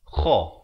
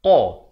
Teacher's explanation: Ini makhrajnya kha, makhrajnya di hujung kerongkong. Kha. Manakala ini qa, di pangkal lidah. Ini makhrajnya di pangkal lidah, ini di hujung kerongkong.